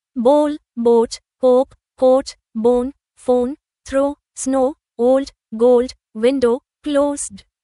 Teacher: এখানে শব্দগুলোতে ও এর উচ্চারণ ও দ্বিস্বরধ্বনি হয়েছে, যেমন হোপ এবং নোট শব্দে হয়।